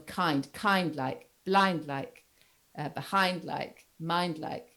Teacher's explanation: the like forms what we call a feminine rhyme, or an unstressed rhyme, because the stress falls on kind like